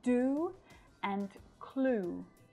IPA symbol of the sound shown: u: